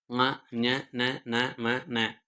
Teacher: மெல்லின மெய் எழுத்துக்கள் ஆறும் மூக்கை இடமாக கொண்டு பிறக்கின்றன ம ஞ ந ம ந என்று மூக்கை இடமாக கொண்டு பிறக்கிறது.